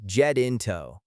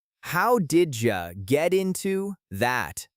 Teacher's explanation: In American English, that T in get sounds like a very quick, soft D sound, jetinto. So, the whole phrase flows like this.